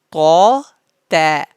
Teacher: First طا is bold and second one is light.